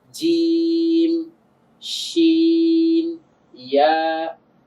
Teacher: তো এখানে ৩ টা হরফের মধ্যে মাখরাজটা কি ছিল? জিহ্বার গোড়াটা উপরের তালুর সঙ্গে গিয়ে লাগবে। তো যখন আমি গোড়াটাকে তালুর সঙ্গে গিয়ে লাগাচ্ছি, আগাটা কিন্তু নেমে যাচ্ছে।